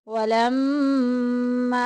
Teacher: میم مشدد آگی غنہ کریں گے، ناک میں آواز لے کے جائیں گے · گے اور آگے دیکھیں کہ الف آ گیا، الف پیچھے زبر، الف مدہ کا قاعدہ جاری ہو رہا ہے، ایک الف کے برابر لمبا کریں گے